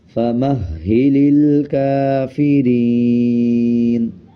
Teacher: یہ ہا کے اوپر شد ہے تو مضبوطی کے ساتھ ادا کیا جائے گا